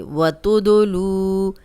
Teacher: वाव मद्दा है, जज़म वाली वाव पीछे लाम पे पेश, 2 हरकत लंबा करेंगे।